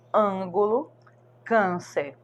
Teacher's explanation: E na vogal A, quando é um som nasal, aquele som que a gente pode colocar a mãozinha aqui e a gente percebe que o som sai pelo nariz